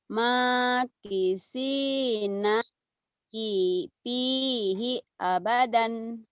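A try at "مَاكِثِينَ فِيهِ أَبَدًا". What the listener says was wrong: Abadan, iya dibaca apa adanya benar.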